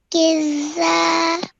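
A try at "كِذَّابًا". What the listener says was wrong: Nearly there. Over here, join the kaf to the dal with force, and then, like you pronounced correctly, it has a vertical fatha on it, so you stretch the sound out for 2 seconds. Kiza. And then over here, the ba has a fatha 10 on it. So remember to elongate the nasal sound at the end. Bun.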